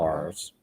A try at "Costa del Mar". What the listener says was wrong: You're supposed to roll your tongue with it.